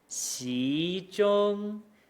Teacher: The xi, that rise, ends right where the first tone starts, and then we can just run with it.